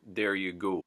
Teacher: The O gets pushed even further from O to oo. So it almost becomes an oo sound.